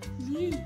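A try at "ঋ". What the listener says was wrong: রি লি দুটো লি না রি লি রি লি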